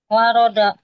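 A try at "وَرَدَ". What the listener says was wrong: bukan do bukan do da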